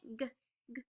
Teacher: the G sound is a blocked consonant sound